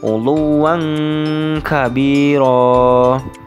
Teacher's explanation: Contoh uluwan kabiro, yang mana fathah tanwin yang terdapat pada huruf wawu dibaca samar seakan-akan terdengar huruf eng karena memang di situ kasusnya bertemu dengan huruf kaf. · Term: ikhfa